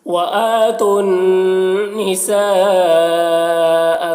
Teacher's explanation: تا کو نون سے ملا کر یہاں پر پڑھیں گے،